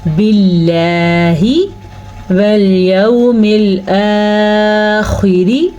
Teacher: لفظ اللہ سے پیچھے زیر ہے تو لفظ اللہ کو ہم باریک پڑھیں گے۔ جب لفظ اللہ سے پیچھے زبر یا پیش ہو تو لفظ اللہ پر پڑھتے ہیں، اور اگر لفظ اللہ سے پیچھے والے حرف نیچے زیر ہو تو لفظ اللہ باریک پڑھتے ہیں۔